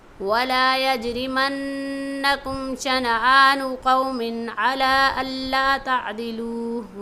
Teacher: وَلَا يَجْرِمَنَّ کے جیم پر قلقلہ ہو رہا ہے اور مَنَّكُمْ کے نون پر ہم غنہ کریں گے